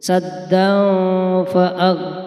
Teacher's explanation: Kemudian ada bacaan ikhfa hakiki, tanwin bertemu dengan huruf fa. Saddan fa'ag, harus dibaca samar dan mendengung.